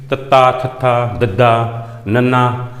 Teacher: ਦੰਤੀ ਧੁਨੀਆਂ ਦੇ ਉਚਾਰਨ ਵੇਲੇ ਜੀਭ ਦੀ ਨੋਕ ਹਰਕਤ ਵਿੱਚ ਆਉਂਦੀ ਹੈ ਤੇ ਉੱਪਰਲੇ ਦੰਦਾਂ ਦੇ ਪਿਛਲੇ ਪਾਸੇ ਜਾ ਕੇ ਲੱਗਦੀ ਹੈ। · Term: ਦੰਤੀ ਵਿਅੰਜਨ